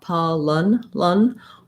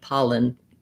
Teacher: You can say it with a clear schwa, pa lun, or it may be more like an I sound, pollen. What I'm going to write is just going right from the L to the N, lun. · So thinking about that second syllable being so short, my pa is long and my lun syllable is short. You can say it with a clear schwa, pa lun, or it may be more like an I sound, pollen.